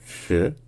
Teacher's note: Donc en fait, c'était pas un peu, enfin, c'est un peu comme un che français, sauf que c'est rétroflexe, c'est-à-dire qu'on a la pointe de la langue qui est retournée dans la bouche, vers l'arrière